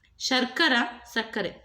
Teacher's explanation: ಶ ಇದ್ದಿದ್ದು ಸ ಆಗ್ತಾ ಇದೆ